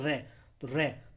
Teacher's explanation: तो जीभ जो है लुढ़क करके हमारी ऊपर जा रही है तालु की तरफ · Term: लुंठित वर्ण